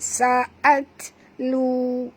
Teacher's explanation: Ta di sini mati, bunyikan hamasnya.